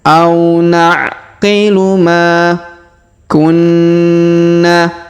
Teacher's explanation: huruf Ma kita panjangkan dua harakat karena terdapat Alif di depannya